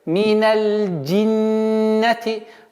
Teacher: Удержание в размере двух огласовок и назализация.